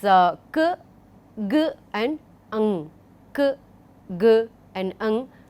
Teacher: when the back of the tongue is against the velum, we call it velar